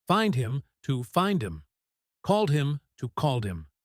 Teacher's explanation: Six times the H disappeared.